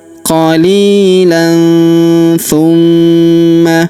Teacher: Huruf ma kita tahan dan kita tekan serta kita dengungkan 2-3 harokat karena di atasnya terdapat tanda tasydid ya.